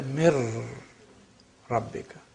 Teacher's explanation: Mir rabbika, noon completely is lost. It becomes ra. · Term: complete assimilation